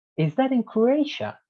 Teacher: so you kind of rise to croatia